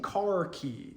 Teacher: that K sound was palatalized by that E vowel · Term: palatalization